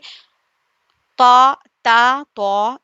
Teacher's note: زبان کی نوک ثنایا الیہ کی جڑ سے تا، تا، تو، دال سیم جگہ سے ادا ہوتے ہیں